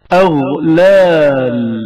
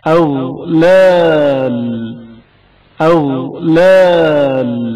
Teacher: غین کی آواز جریان رکھتی ہے اور اچانک منقطع نہیں ہوتی